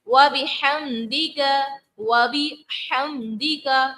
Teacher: ہا کو ہم حلق کے جو ہے درمیان والے حصے سے ادا کریں گے، کیونکہ عین اور ہا جو ہے حلق کے درمیان والے بیچ والے حصے سے، وسط حلق سے ادا ہوتا ہے.